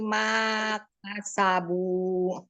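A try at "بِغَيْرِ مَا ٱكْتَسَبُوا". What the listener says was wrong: Dia juga sama itu pendek ya. Perhatikan itu walaupun pergantian baris ya. Kadang suka lepas tuh ketika pergantian baris, huruf akhirnya berharokat pendek suka kebaca panjang karena ayunan ya. Wal mu'minati bi ghairi maktasabu. Maktasabu langsung sukunkan ke kaf.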